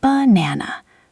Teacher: You say banana. Those little b and n sounds are weak, light, thrown away almost. That throwaway lightness is the neutral tone.